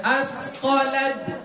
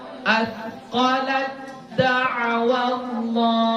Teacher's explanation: Jangan qalqalah, jangan asqalat. Jangan ada qalqalahnya, ya, ditahan.